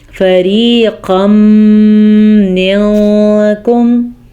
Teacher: اس طریقے سے ہم نے غنہ بھی ادا کیا اور ملا بھی دیا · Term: ادغام بالغنہ